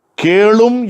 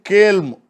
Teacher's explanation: கேளும் என்பது கேள்ம், ஊ கெட்டு கேள்ம் என்று வருகிறது